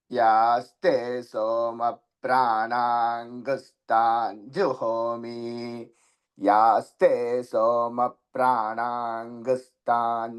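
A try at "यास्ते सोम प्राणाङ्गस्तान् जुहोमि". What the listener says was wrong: అలా కాదండి. యాస్తే సోమ ప్రాణాగ్ ప్రాణాం సున్నా చెబుతున్నారు మీరు, లేదండి అక్కడ. ప్రాణాగుస్తాంజుహోమి.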